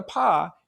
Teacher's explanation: close for the vibration so that when you make a paw you feel that puff of air in front of your mouth which is the air going through your lungs through your open vocal cords out your mouth